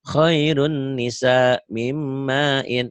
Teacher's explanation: Nun mati atau tanwin berhadapan dengan huruf nun dan mim dibacanya melebur. Melebur apa bunyi nunnya, bunyi n-nya melebur pada berubah menjadi huruf sesudahnya. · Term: idgham